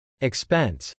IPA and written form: ɪkspˈɛns (expense)